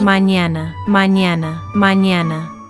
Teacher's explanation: Your tongue touches the roof of your mouth in the same position as the English N. But at the same time, you raise the middle part of your tongue toward the roof of your mouth, which creates that Y quality.